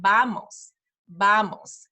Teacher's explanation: in Spanish the letter V is kind of like a letter B it's almost like in between a b and a v so vamos vamos it's more like a b than a v